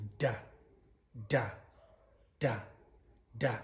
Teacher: all of these sounds are produced by your tongue being placed in the alveolar ridge and blocking the sound from there and then releasing it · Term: slack voice